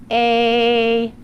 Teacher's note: your voice box is activated so that means that when you put your hand on your voice box you're going to feel a vibration · the front part of your tongue is in the middle of your mouth your lips are flat and your mouth is slightly opened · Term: long a